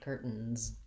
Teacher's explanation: when I make it plural with the S, it has the Z sound, curtains.